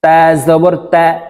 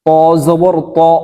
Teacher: তা পাতলা ভাবে উচ্চারণ হবে ত একটু মোটা করে উচ্চারণ হবে